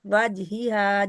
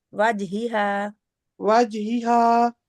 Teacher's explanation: یہ بہت نرمی والی ہوا، ہا آسانی سے پڑھنے والی ہا ہے